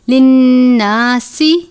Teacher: ہدی للناس، نون مشدد پر غنہ کرتے ہیں. سین حروف صفیریہ میں سے ہے، ادا کرتے وقت آواز سیٹی کی طرح نکلتی ہے